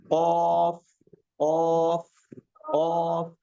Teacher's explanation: जब उस जुबान की जड़ को तालू से लगाएंगे तो कौफ अदा होता है। कौफ कौफ जुबान की जड़ ऊपर का तालु उससे कौफ अदा होता है।